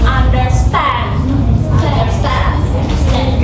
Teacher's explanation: The pattern has three syllables in total. The first two syllables are unstressed and the third one is stressed. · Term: anapath